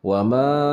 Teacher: ma di sini adalah mad jaiz munfasil, dibacanya 4 harakat